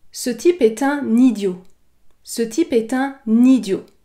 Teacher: On effectue toujours la liaison entre un et idiot. Cette liaison est obligatoire.